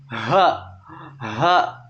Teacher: H itu kan di ujung tenggorokan.